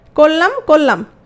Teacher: র চলে গেল, লটা দ্বিত্ব হয়ে গেল। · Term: রকার লোপ